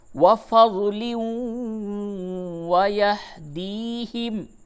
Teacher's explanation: تنوین کے بعد واو ہے، ادغام مع الغنہ ہوگا